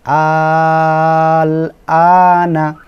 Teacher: হামজা এর উপরে খাড়া জবর এবং তার উপরে মোটা চিহ্ন, লামের উপরে সাকিন, তাহলে এখানে 4 আলিফ টানতে হবে। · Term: মদ্দে লাজিম কালমি মুখাফফাফ